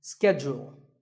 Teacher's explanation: In American English, this is schedule. The first syllable is ske and the second is jewel, schedule. In British English, it can be both schedule or schedule.